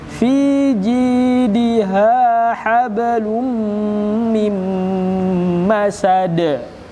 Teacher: Fi-nya panjang, ji-nya panjang, ha-nya panjang.